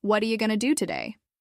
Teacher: What are you becomes what are ya. Going to becomes gonna.